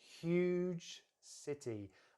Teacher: I'm going to lengthen the huge a little bit more and kind of stress that word just a bit more, because I want to emphasize the size of the city.